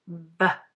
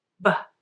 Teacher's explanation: the V sound in van uses your teeth and lips, V, while the B sound in ban uses only your lips, B.